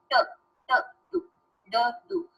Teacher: जैसे ट, ट, टू, ड, डू, इसमें आपकी जो जबान है ना, आपकी जो टिप ऑफ द टंग है वो आपके ऊपर वाले दांतों के साथ टकराती है, या आपके तालू, तालू तो नहीं कहेंगे इसको, दांतों की जड़ के साथ टकराती है। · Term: एल्वियोलर